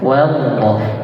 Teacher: Wa di situ tipis. Jadi waw dalam keadaan apapun itu tipis.